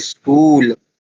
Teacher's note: कई लोगों को मैंने बोलते सुना है वो इस तरह से बोलते हैं स्कूल वहां पर इ लगा देते हैं ना